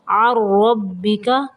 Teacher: نون کو نہیں پڑھنا، عین کو را کے اندر ملائیں گے